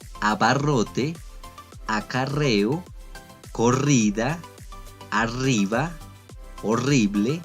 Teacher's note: La pronunciación de la doble R o RR será siempre fuerte o de sonido alveolar vibrante múltiple